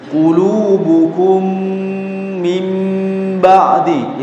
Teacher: itu adalah bacaan dengung ya. Porsi dengungnya ditambah sedikit ya.